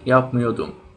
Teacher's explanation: the R isn't pronounced in daily speech